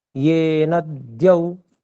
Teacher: न में जो अ है उसको गुरु करना था, ये न द्यौ, ऐसे जी।